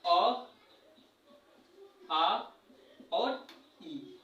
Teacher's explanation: जिन स्वर का उच्चारण में हवा केवल मुंह से निकलती है उसे हम क्या कहते हैं, मौखिक स्वर कहते हैं।